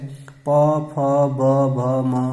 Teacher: दोनों ओठों के स्पर्श से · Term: ओष्ठ्य वर्ण